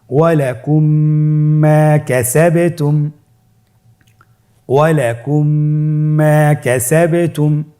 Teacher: মিম সাকিনকে পরবর্তী মিমের সাথে মিলিয়ে পড়তে হবে গুণনার সহিত